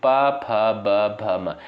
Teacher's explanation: प, फ, ब, भ, म इनका उच्चारण ओष्ठ से होता है